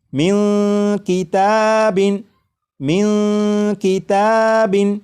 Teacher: آ چکا ہے، لہٰذا اس نون ساکن میں اخفاء ہوگا، یعنی اس نون ساکن کی آواز کو ناک میں چھپا کر غنہ کر کے پڑھیں گے